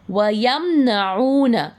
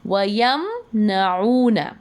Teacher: ہم میم کی آواز کو ظاہر کر کے پڑھیں گے، اس میں گننا نہیں کریں گے۔ یعنی میم کی آواز کو نہ تو مرچ کرنا ہے، نہ ناک سے پڑھنا ہے، نہ نیزل ساؤنڈ نکالنی ہے، اور نہ گننا کرنا ہے۔ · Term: اظہار شفوی